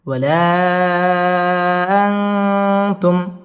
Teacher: ইকফা গুন্নাহ করে পড়তে হবে